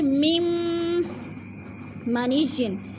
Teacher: تم، دا تا دو زبر میم، تم یعنی میم مشدد ہے ادھر دو زبر کے بعد، تو ادغام ہو رہا ہے، سختی سے جمع کر پڑھیں گے. میم منیجن، میم کو میم کے ساتھ ملانا ہے، درمیان والا نون ساکن نہیں پڑھا جائے گا